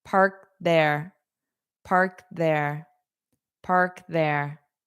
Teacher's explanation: So you might hear a little click for the K.